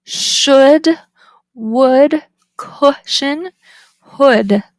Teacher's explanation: So it's high, back, rounded, and a lax.